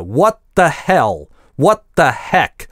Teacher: Артикль the чаще всего звучит в этом сочетании как "т", как русское "т", хотя может и не оглушаться и звучать как the. Но /t/ в конце слова what никогда не может озвончаться и превращаться с /d/, как мы делаем в русском. Иногда, когда я студентам даю это объяснение, некоторые неправильно это себе представляют в голове и произносят это с английским альвеолярным /t/ и еще его и придыхая - what the.